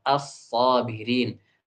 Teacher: Lamnya diubah menjadi sad, as-sabirin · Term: Diidghamkan